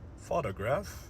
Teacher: So in photograph, the stress is on the first part.